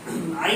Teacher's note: عین کا مخرج درمیانی حلق